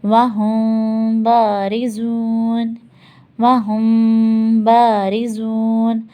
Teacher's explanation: ہمیں میم کا اخفا کرنا ہے، یہاں پہ میم کو چھپانا ہے